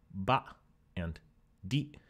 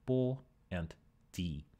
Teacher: these are voiced and then they became voiceless in malecu